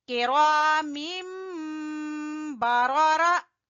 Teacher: تنوین کی جگہ، نون کی جگہ پر ہم نے میم کی آواز نکالنی ہے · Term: اقلاب